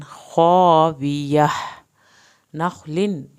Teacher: यहाँ पर आगे तनवीन के बाद खा आ गया है तो इख्फा नहीं होगा, नखलिन पढ़ा जाएगा।